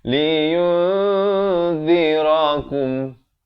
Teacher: Sekali lagi di sini ikhfa hakiki. Nun mati bertemu dal 2 harakat samarkan.